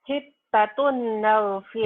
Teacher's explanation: Dibacanya N-nya hilang. Tapi hilangnya nggak kelihatan ya, karena masuk N lagi. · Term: Idgom diguna